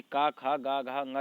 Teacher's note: का खा गा घा अंगा ये आपके क्या होते हैं, कंठ्य ध्वनियाँ कहलाती हैं